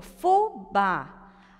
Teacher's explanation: sílaba tônica no bá. Ela é uma oxítona. Então, ela leva acento porque ela é terminada em a, certo?